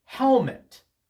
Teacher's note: the first syllable of this word is stressed